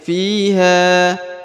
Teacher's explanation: Fi dibaca panjang dua harakat karena di depannya terdapat ya sukun atau ya mati